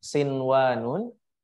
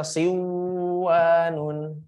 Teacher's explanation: tidak boleh dibaca idgam dia mesti dibaca ee izhar harus jelas